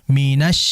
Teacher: Hati-hati ketika peralihan antara nun ke shin ya, itu ditahan dan jangan monyong.